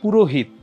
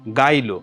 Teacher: আধুনিক চলিত ভাষায় অনেক সময় দুই স্বরের মাঝামাঝি যেই হ সেটাও লোপ পায়